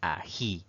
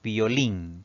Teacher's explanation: la mayor fuerza de voz recae en la última sílaba contando de derecha a izquierda. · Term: palabra aguda